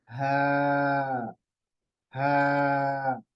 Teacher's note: इसकी आवाज आएगी हल के बिल्कुल आखरी हिस्से से यहां से ठीक है मुंह से नहीं आएगी हा हा नहीं